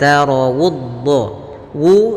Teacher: tapi dia as asin Ul kemudianud Wu sempurnakan damahnya dimonyong ya dimajukan sedikit bibir kita monyong untuk menyempurnakan huruf wau yang berharakat damah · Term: dhammahnya